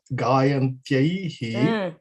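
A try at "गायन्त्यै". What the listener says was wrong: Gayantyai eva. There is no visargaha there. Gayantyai.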